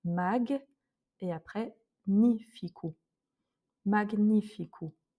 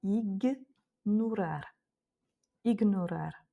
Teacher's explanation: le G avec le N ne se prononce pas gne comme en français. On va vraiment prononcer chaque consonne de manière isolée.